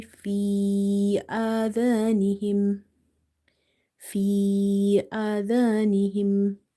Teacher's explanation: the amount of stretching here for the ya will be 2.5 alif, 2.5 alif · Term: madde munfasil